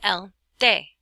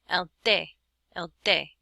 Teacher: Well, it's a whole lot more like the letter D. It's a combination T-D sound. It's not quite like a D. It's definitely not like a T. And again, your tongue touches the back of your front teeth, and there's no puff of air.